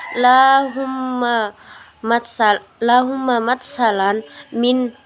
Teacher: Cara membacanya adalah dengan meleburkan huruf mim mati ke dalam huruf mim berharakat yang ada di depannya atau ditasdidkan yang disertai dengan gunnah atau dengung selama 2 harakat. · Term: idgham mimi